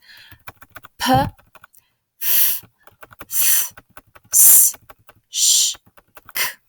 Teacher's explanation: on n'entend pas le voisement, c'est-à-dire qu'on ne les prononce pas en faisant vibrer les cordes vocales. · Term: consonnes non voisées